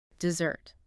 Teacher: if you stress the second syllable dessert, you're talking about cake after dinner.